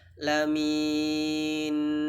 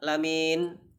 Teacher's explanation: jadi Nun itu di bunyikan sedikit setengah harokat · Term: sisa huruf